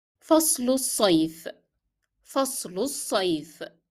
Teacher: So because I will say فصل الصيف together, I pronounce the kasra appearing below lam in فصل, and then I dropped the sound of lam in الصيف because it is followed by a shadda letter.